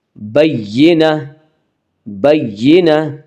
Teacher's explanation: گول تا وقف کی صورت میں ہائے ساکنہ بن جاتی ہے، یعنی وہ ہا جس کے اوپر جزم ہو۔